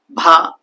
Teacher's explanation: ఇక్కడ రెండోది BHA ఒత్తు బాకి మనం ఉచ్చారణ కొంచెం గొంతు లోపల నుంచి అన్నది హెచ్ సౌండ్ తోటి ఎక్స్ట్రా మనం ఇవ్వాలి